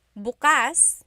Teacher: the emphasis is on the second syllable that means open.